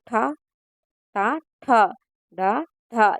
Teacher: అరు అరు ఠ ట ఠ డ ఠ ఇవన్నీ కూడా మూర్ధన్యాలు అండి నాలుకతో గట్టిగా అంగలిని తాకుతూ పలికేవి మూర్ధన్యాలు